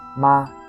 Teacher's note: It is light, short, and doesn't carry much tone at all. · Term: neutral tone